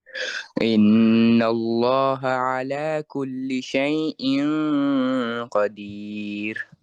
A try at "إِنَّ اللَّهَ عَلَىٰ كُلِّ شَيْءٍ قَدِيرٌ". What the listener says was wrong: স্পষ্ট হয় নাই সেই ক ইং ক ইং ক অর্থাৎ কফ যেখান থেকে উচ্চারণ হয় কোত্থেকে একদম জিহ্বার একদম শেষ গলার শুরু এই যে হ্যাঁ তাই না অর্থাৎ হচ্ছে কি আহ জিহ্বার গোড়া উপরের যে নরম জায়গা ওখান থেকে ক তাহলে কফ ও গুণনা ওখান থেকে সেই ক এভাবে চলবে